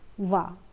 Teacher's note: दंत और ओष्ठ यह दांत है और यह होठ है। इन दोनों को मिलाकर जो बोला जाता है वो होता है व।